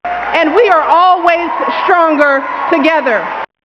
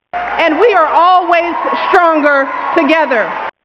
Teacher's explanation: this S retraction is sort of an innovation where the S is pronounced further back in the mouth, which creates a sound that is more like sh than s, right? And it's mostly before consonantal clusters with T and R.